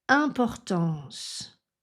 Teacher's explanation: Donc en, important, importance. Dans le mot importance, qui se termine par un son de consonne S, S, vous pouvez allonger légèrement la voyelle nasale en.